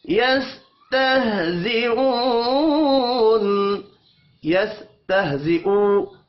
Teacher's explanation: یستہزئو واو مدہ ہے، ایک الف کے برابر کھینچ کر پڑھیں گے. وف کی صورت میں نون ساکن پڑھا جائے گا.